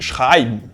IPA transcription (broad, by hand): ˈʃʁaɪ̯bn